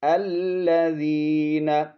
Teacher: یا حرف مدہ ہے، ایک الف کی مقدار کھینچیں گے